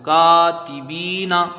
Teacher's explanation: کاف میں ایک الف کی مقدار رکھیں گے، کاف کے ساتھ الف مدہ ہے